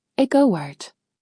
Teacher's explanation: A native speaker does not say go out. The mouth slides through a w sound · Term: intrusive bridge sound, intrusive glide sounds